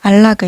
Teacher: 알락을 이렇게 발음이 되기 때문에 뒤듬절로 인해서 오히려 앞음절의 니은이 다르게 발음되는 역행동화 내지는 유음화의 사례라고 보시면 되겠습니다